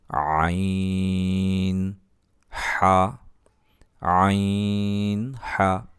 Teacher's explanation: হলকের মধ্যকার হইতে আওয়াজকে চাপাইয়া করতে হবে